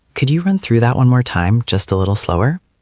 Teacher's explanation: goes up in pitch on run through and again on slower. It keeps it friendly.